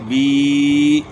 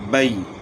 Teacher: یائے مدہ ہونٹوں کو نیچے کی طرف کھول کر تھوڑا سا کھینچ کر پڑھیں۔ یائے لین ہونٹوں کو اوپر کی طرف کھولنے کے فوراً بعد نیچے کی طرف جھکا کر نرمی سے بغیر کھینچے پڑھیں۔